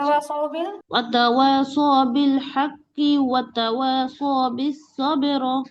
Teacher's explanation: মিলায় পড়লে তো কফের জেরি হবে, ওয়াকফ করলে না কফের মধ্যে কলকলা হবে